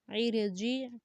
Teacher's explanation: را سے پہلے زیر ہے ہمارے پاس اس لیے را کو باریک پڑھیں گے